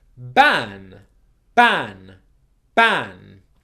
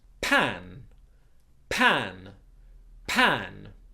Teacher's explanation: for B, my voice box is vibrating, b, b, b. And for P, my voice box is still.